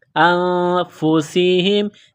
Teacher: نون ساکن کے بعد فا ہے تو یہاں آواز ناک میں چھپائیں گے، غنہ کریں گے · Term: اخفا